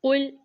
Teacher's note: قاف کی ادائیگی پر کریں گے اور لام پر آواز رک جائے گی